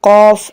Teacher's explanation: the root of the tongue it touches to the soft part of the palate